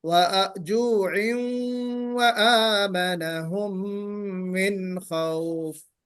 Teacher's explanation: गुन्ना भी करना है और वाव के साथ मिला के पढ़ना है, वाव में मर्ज करना है आपको तनवीन। वजुइन व आमनहुम मिन खौफ, तो ये है।